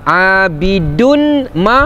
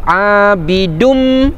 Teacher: Abidun ma salah, tapi masuk dalam huruf mim tu, abidum. Tapi masuk saja pun tak cukup, sebab namanya ma'al ghunnah, dengan dengung. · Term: idgham ma'al ghunnah